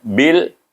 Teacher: Jangan panjang, tak ada dengung-dengung. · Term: izhar